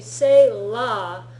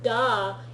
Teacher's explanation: if you say la, your tongue is really up against your teeth, right? Your top teeth. Da, it's a lot further back, right? La is like at the joint of where your teeth meet your gums on the top.